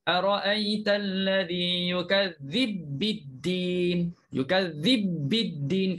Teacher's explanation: Jadi di sini kita masukkanlah ba pertama dalam ba kedua. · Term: idgham kabir